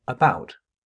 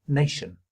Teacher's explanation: the first syllable of the word about or the last syllable of the word nation are both reduced syllables